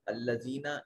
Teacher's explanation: الذین یا ساکن ہے ما قبل مقصور، یا مدہ جوف دہن سے ادا کی جائے گی